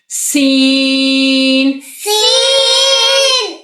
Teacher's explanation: سین میں سیٹی آئے گی، سین میں سیٹی کے ساتھ اس کو باریک پڑھیں گے، سین۔ سین۔